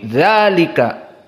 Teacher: Dihapus khotnya untuk meringkas, namun tetap dibaca mad tabi'i, dzalika.